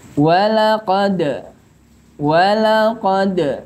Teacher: Dal yang mati harus diqalqalahkan walaqad